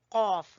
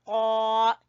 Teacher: قاف کو زبان کی جڑ سے ادا کرنا ہے آپ نے، قاف. قاف کھڑی زبر قا.